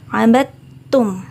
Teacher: dalnya tidak terbaca. Jadi bukan ngabadtum, tapi dalnya langsung lebur ke ta. Karena di situ ada tasydid.